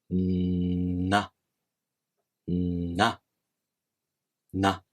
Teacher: the tip of your tongue touches the gum ridge, and the air passes through your nose. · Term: nasals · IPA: [na]